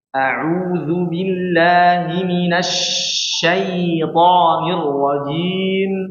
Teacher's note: Jadi perlu ditekan, baru ditahan dulu, ya. Jadi sh-nya lama ya. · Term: nafas shin